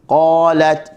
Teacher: Qalat, huruf qaf adalah huruf isti'la. Huruf berada di pangkal lidah, bertepatan dengan langit yang lembut.